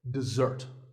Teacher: notice that the first syllable is d and the second starts with a z sound